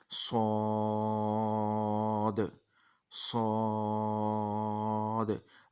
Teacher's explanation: सौद की सीटी हमने मोटी पुर करके पढ़ना है, क्योंकि हमने इसको मोटा पढ़ना है।